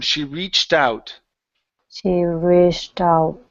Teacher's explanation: cut off that T, add it to the word out.